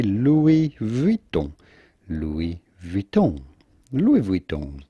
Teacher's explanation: Do not insist on the final N all that much.